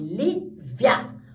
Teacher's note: ele vai de uma semivogal, que é baixinha, para uma vogal, que é grande. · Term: ditongo crescente